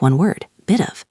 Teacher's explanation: The word of is usually pronounced lightly just of. And it connects to the word before it.